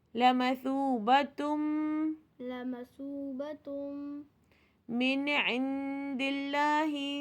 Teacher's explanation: تنوین کے بعد اگر میم آ رہا ہے تو یہ ادغام مع الغنہ ہے، اچھی طریقے سے غنہ کریں گے · اب دیکھیں نون ساکن کے بعد عین ہے تو یہاں پہ اظہار کا رول آ رہا ہے. نون ساکن یہاں پہ کوئی غنہ نہیں کریں گے